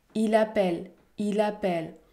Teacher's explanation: le rythme est régulier chaque syllabe est prononcée avec la même intensité et la même durée